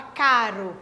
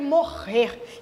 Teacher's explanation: Também apresenta 6 letras como representação gráfica dessa palavra, porém, nessa palavra aqui, é esse bloco aqui, ó, do R com o R, que produz apenas um som do R mais forte, morrer. Diferente da palavra caro, por exemplo, que esse ro produz um som um pouco mais fraco do que morrer, que é um R mais forte.